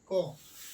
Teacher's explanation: तो याद रखिएगा कंठोस्थ कंठ्य वर्ण है। तो क जो है कंठ से बोलने वाला वर्ण है